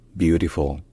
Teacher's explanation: dernière syllabe se prononce avec un L qui est vélarisé c'estàd un L qui est pas juste prononcé le mais qui est prononcé avec l'arrière de la langue qui est un peu relevé